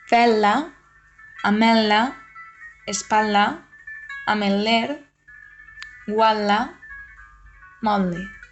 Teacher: el grup TL pot tindre una pronunciació simple, encara que és preferible la pronunciació geminada.